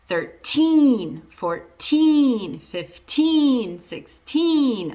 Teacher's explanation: And the rule is, if you're using a teen number, the stress is on the teen part